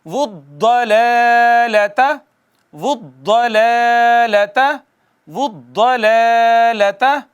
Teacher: حروف طرفیہ میں سے ہے، اور یہ ادا ہوئی طرف زبان اور ادراس کے ملنے سے۔ ادراس کہتے ہیں داڑوں کے مجموعے کو۔